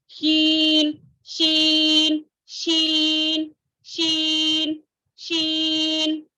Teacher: تالو سے جو ہے شین شین ادا کرتے ہوئے, جیم ادا کرتے ہوئے ہماری زبان کا درمیانی حصہ جو ہے تالو سے اچھے سے چپک جائے گا, لیکن شین میں تھوڑا گیپ آئے گا, تھوڑا گیپ آ جائے گا, لیکن سیم مخرج. جیم ٹچ کرتا ہے, شین تھوڑا تھوڑا نیچے, شین شین شین شین شین ٹھیک ہے, الحمدللہ سمجھ میں آ گیا.